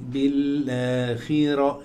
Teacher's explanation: في الخاء مكسورة أقل مراتب التفخيم